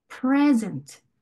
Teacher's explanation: 첫 번째 단어, 선물 단어는요, present. 이렇게 pre 부분에 강세가 가는 거예요